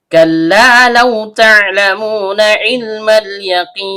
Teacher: Lam ujung lidah bertemu dengan langit-langit bagian depan.